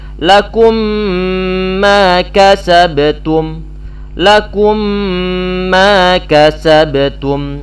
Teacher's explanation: Idgham mal gunnah artinya idgham yang disertai dengan gunnah. Artinya huruf pertama diidghamkan pada huruf yang kedua, disertai dengan suara gunnah. Jangan sampai lupa ya ikhwah, gunnah itu muncul di bagian hidung. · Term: idgham mimi